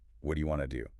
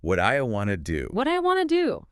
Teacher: Want to becomes wanna. What do you becomes what'ya. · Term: compression